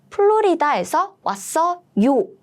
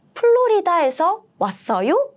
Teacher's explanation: In English, you have to change the word order, but in Korean, well, you don't need to do anything. You only need to raise the intonation at the end of the sentence. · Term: rising intonation